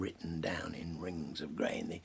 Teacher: The assonance of those little short vowel I's, the E. It's amazing.